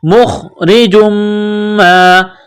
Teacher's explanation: را کے نیچے زیر ہے تو را کو باریک کرنا ہے · جس طرح انسان گلے سے بلغم نکالتا ہے اسی طرح اس خا کو نکالیں گے